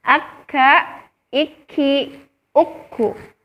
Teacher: Kemudian sifat yang kedua, dari segi tekanan suara, dia termasuk daripada asyiddah, yaitu artinya kuat dan tertahan. Jadi ketika kita mengucapkan huruf kaf, berharokat sukun dan berharokat tasydid, maka suaranya itu tertahan